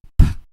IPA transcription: p